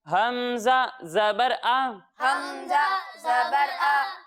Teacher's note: جب ہم حمزہ کی ادائیگی کریں گے تو اسے حلق کے نچلے حصے سے پڑھیں گے